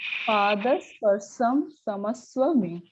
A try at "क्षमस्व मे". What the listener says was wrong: It's not Shamaswame. Kshamaswame. Cha. Cham, cha. There is it's a karkasha vyanjanam, right? It's stronger. Or samyuktaksharam. Cha. Ka plus sha. Cha. Chamaswame.